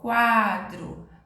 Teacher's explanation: a letra U saiu com o som mais fraco Ele é chamado de semivogal